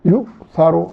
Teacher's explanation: حمزہ کو جھٹکے کے ساتھ ادا کرنا ہے